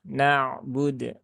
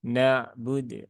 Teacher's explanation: nun itu dia juga hurufnya huruf tipis, maka jangan ditebalkan ya hurufnya ya. Jangan menjadi na ya, tapi na.